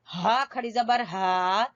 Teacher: اقصا حلق، حلق کا جو سینے کی طرف حصہ ہے